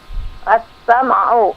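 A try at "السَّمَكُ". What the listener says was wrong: As-samak. Pakai kaf.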